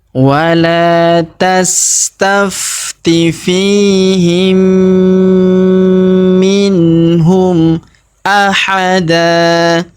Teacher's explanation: mim sukun bertemu dengan huruf mim yang berharokat tasdid, maka mim sukunnya melebur masuk ke huruf mim yang berharokat tasdid, yang ini. Kita tahan dan kita tekan serta kita dengungkan 2 sampai 3 harokat.